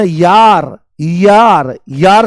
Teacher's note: जैसे ही आप बोलोगे य है ना, यार, यार, यार से यार बोलते ना, अरे यार, तो जैसे ही आप य बोलते हो तो य में आप ध्यान से सुनने की कोशिश करो। य बोलते ही ई की ध्वनि आती है। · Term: अर्धस्वर